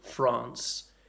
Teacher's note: So one of the notable features is the long vowels, and they're particularly notable in the names of some countries, like France.